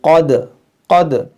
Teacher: آپ دیکھیں کیا کیا ہے، قاف حروف مشتعلیہ ہے، اس کو موٹا کریں، دال میں قلقلہ ہوگا